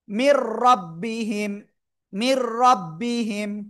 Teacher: গুন্না ছাড়া মিলিয়ে পড়তে হবে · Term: ঈদগামে বেলাগুন্না